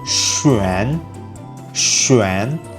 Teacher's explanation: you have to make the shush sound at the start